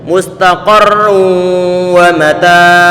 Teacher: bacaan Idgham bighunah maka pastikan bahwa hidung ini ada getaran bisa menahan suara dengungan